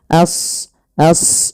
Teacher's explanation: Kemudian pelafal ashabu as shad ya huruf shad tebal jangan as jangan sin tapi as as ya a-nya tipis shadnya tebal karena shad punya sifat huruf isti'la dan idbaq